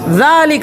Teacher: زبان کی نوک سامنے کے 2 دانتوں کو لگے تب زال